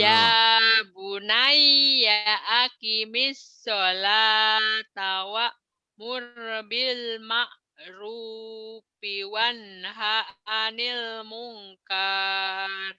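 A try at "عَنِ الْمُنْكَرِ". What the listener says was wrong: Salah. Mungkar. Kan nggak ada panjang. Kalau dipanjangin itu kalau ada mad di ujungnya. Anil mungkar gitu ya. Kenapa nggak panjang? Kan nggak ada mad. Kalau nggak ada huruf pemanjang jangan dipanjangin. Nggak setiap yang berhenti itu panjang. Berhenti panjang itu kalau di ujungnya ada mad.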